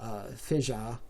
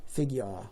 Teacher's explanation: For instance, in Cameroon English, there are many splits happening in the unstressed vowel system, so that, for instance, the last vowel in fissure and figure are assigned phonemically to the palm and cloth vowel, respectively. So fissure in Cameroon English would be more like fija, and figure would be more like figure.